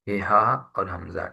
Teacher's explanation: یہ حلق کے نیچے والے حصے سے ادا ہوتے ہیں، جس کو اقصی حلق کہتے ہیں جو سینے کی طرف ہے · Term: حروف حلقی